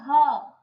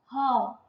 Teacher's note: श्वास वर्ण कहते हैं, सांस आ रहा है, मुंह खोल के उच्चारण करना है। ह, लिप का कोई जरूरत नहीं है।